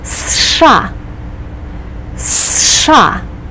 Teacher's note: you pronounce it as one syllable. You start with a strong S sound, then you do the SH sound, and you complete it with an A.